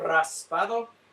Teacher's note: the rolled r was a bit of a giveaway